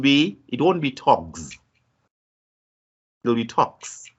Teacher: there's no vibration of vocal cords when you pronounce k. So because of that, then it makes it voiceless.